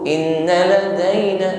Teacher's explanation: ditahan pada nun yang bertasydid, ada bacaan gunnah